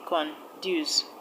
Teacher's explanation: Conduce is a 2 syllabic word, and the stress will go to the second syllable, dues. Now option C, renewal.